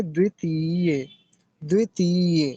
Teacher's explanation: अब इसको तीय लंबा खींचेंगे थोड़ा सा